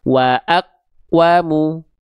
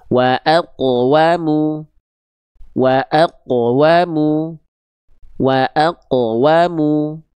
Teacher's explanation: itu kan qaf sukunnya betul-betul tidak ada pantulan.